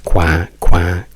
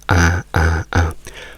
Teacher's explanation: Qui in Inghilterra fa qua con questa A nasale, quindi A. O anche il suono di un buzzer, quello per far entrare la gente nella vostra casa, quando fate è questo suono gracchiante nasale.